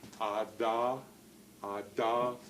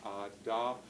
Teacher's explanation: you go ah and then put the tongue tip up, behind your teeth, ada. The sound, is blocked off completely then. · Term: stops